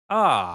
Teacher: it's just as open as back as it goes. · It's back, open back.